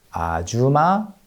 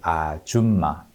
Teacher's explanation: But pronunciation of the word 아줌마 sounded a bit more like 아주마 instead of 아줌마, missing the last consonant in the second syllable